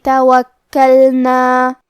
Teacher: کاف پہ تشدید ہے، لہذا ہمیں 2 حرف کے برابر کاف کو پڑھنا ہے